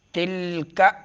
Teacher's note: زبان کی سرا جب سامنے دانتوں کے جڑوں سے لگے، یہ مخرج ہے تا کی